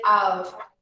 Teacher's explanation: We say this letter here, the final letter, with a sound of V, okay? Not a sound of F.